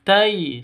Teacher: 'tai' , kualitas lin, fleksibel, lembut, tidak boleh tersentak, tidak boleh digumamkan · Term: sifat lin